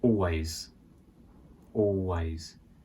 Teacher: Notice here we don't say the L of always. It sounds a little bit awkward and unnatural to say that.